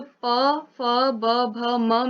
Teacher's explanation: जब हम प बोल रहे हैं तो प में हमारा ऊपर वाला ओष्ठ और निचला ओष्ठ दोनों एक दूसरे से टकरा रहे हैं।